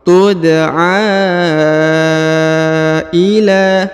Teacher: Kullu ummatin tud'a ya, huruf a dipanjangkan 5 harokat ya, karena di atasnya terdapat tanda panjang 5 harokat yang ini ya. Huruf dal dipantulkan karena dia adalah huruf-huruf qalqalah atau pantul apabila berharokat sukun.